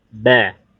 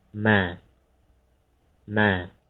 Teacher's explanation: Kalau mim hanya nutup ringan saja ya. Ma. Ya, kalau ba tadi agak ditekan ya. Ba. Yang ma hanya nutup ringan ya.